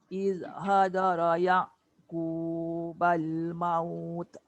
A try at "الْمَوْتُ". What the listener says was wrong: Maut, jangan maut. Tak boleh tu, dia jadi qalqalah. dengar tak saya punya bunyi ta tu berangin? Maut. Ada angin tapi dia ikut suara sekali, suara tak boleh. Maut. Tek tu jadi qalqalah tu. Buang lantunan.